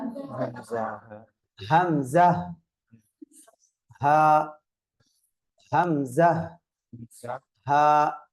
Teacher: கடைசி தொண்டையிலிருந்து இந்த இரண்டு எழுத்துக்களும் உச்சரிக்கப்படுகிறது